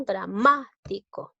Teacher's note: Lleva la mayor fuerza de voz en la sílaba ma, ¿no? Dramático. Es una palabra esdrújula.